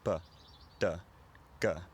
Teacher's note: in traditional Northern English and Scots, you find much less aspirated, sometimes completely unaspirated plosives.